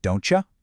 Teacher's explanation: That t sound in don't hits the y sound in you and they morph into a ch sound